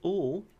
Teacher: we could call ul the voiced alveolar lateral liquid